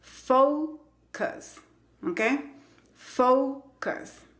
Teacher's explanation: La primera sílaba se escribe con una O, la letra es O, pero la pronunciación es con el diptongo O, fo. Y la sílaba que no tiene el acento se pronuncia con el sonido schwa